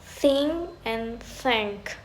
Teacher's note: voiceless dental fricative, as in think and thank